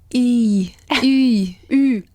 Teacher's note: tienes que poner la boca en forma de U y decir una I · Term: La U francesa